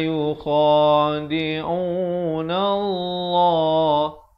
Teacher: Lafz jalalah di sini dibaca tebal 2 harakat kerana datang sebelumnya baris fathah